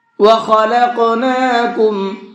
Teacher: خا کو پر کر کے پڑھیں گے، اور قاف کے اندر قلقلہ کریں گے